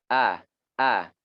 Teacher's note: Di pita suara nih di bawah jakun sebenarnya. Ini huruf hamzah. A gitu ya. Disitulah tempatnya.